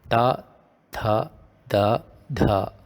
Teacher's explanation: So this is where you should produce a sound from, and for that you can just position your tongue at that location. These sounds come under dental, meaning they are in contact with your teeth. Ta, tha, da, dha, right, without the full stop below.